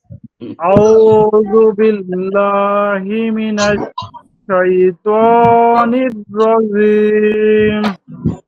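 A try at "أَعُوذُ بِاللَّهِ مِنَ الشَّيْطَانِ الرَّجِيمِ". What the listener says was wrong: এটা নরম হচ্ছে নরম হবে না শক্ত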